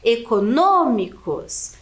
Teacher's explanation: Então, a antepenúltima sílaba aqui é a mais forte e ela é acentuada. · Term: antepenúltima sílaba tônica